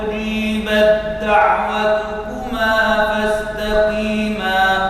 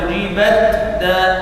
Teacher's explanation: Ta-nya tidak dibaca tapi langsung masuk ke huruf dal. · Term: mutajanisain shaghir